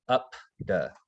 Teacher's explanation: if you put your hand on your throat again up duh you'll notice it doesn't vibrate when you pronounce the p